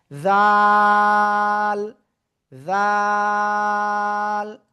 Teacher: খেয়াল করবেন সবাই, এই যে অক্ষরটা উপরে জাস্ট একটা নোক্তা হবে, জিহ্বার আগে উপরে দুই দাঁতের আগায় লাগাবো, লাগিয়ে আমরা এটা 3 আলিফ টানে উচ্চারণ করব। জাল, জাল।